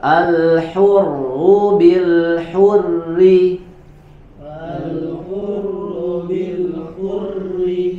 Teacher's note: Jadi hurri tetap dibaca tipis karena harokat pada ro bertasydid tersebut adalah harokatnya kasroh